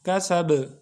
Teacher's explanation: حروف قلقلہ میں سے ہے۔ جب با ساکن ہوگا یعنی حروف قلقلہ میں سے کوئی بھی حرف ساکن ہوگا تو اس کو ہم آواز کو ٹکرا کے واپس کریں گے